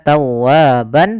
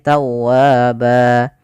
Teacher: ketika di akhir bacaan kita namakan dengan mad iwad, yaitu berubah menjadi panjang ba kalau kita waqaf. Bukan lagi kita baca tawaban tapi tawaba.